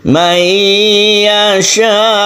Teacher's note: sukun hamzanya harus ketara, harus terlihat suaranya, harus terdengar sukun hamzah